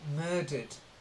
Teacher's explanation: Then murdered, with a D, it's not a T sounding at the end, it's a D